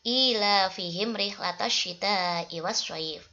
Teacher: Di situ juga ada hukum bacaan yang dibaca panjang 2 harokat. Terus ada hukum bacaan al-syamsiyah yang alnya itu dibaca tidak jelas